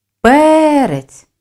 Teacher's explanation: збільшую силу голосу ми виділяємо перший склад наголос падає на голосний е слові шість букв проаналізуємо звуки п приголосний твердий е голосний наголошений